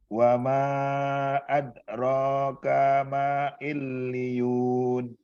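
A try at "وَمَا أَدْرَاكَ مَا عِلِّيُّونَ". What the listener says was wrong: Illiyun. Kurang dikagetin pas li. Jadi illiyun. Kayak dihentak-hentak gitu.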